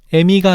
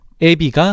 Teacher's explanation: 이모음 역행동화는 후설 모음인 으, 어, 아, 우, 오 뒤에 전설 모음 이가 오면 그 영향을 받아서 이, 에, 위, 로 바뀌어 소리나는 현상을 말해. 뒤에 오는 이 모음이 앞 모음에 영향을 준 거니까 이모음 역행동화라고 해. 그런데 결론적으로는 후설 모음이 전설 모음으로 바뀐 거잖아.